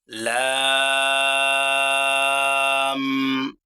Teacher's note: জিহ্বার আগার কিনারা সামনের উপরের দাঁতের মারির সঙ্গে লাগাইয়া একটি হরফ উচ্চারিত হয়।